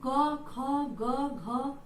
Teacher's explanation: तो आप देखिए कि क, ख, ग, घ अंग, और उसके बाद आ और अह, इसका उच्चारण कंठ से होता है, गले से इसका उच्चारण होता है